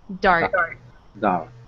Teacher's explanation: At the end of dart, we have a T. So make sure the T is very soft.